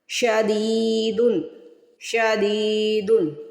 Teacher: زید کے بعد یا ساکن آ جائے تو اس ورڈ کو 1 سیکنڈ کے لیے کھینچ کر ادا کرتے ہیں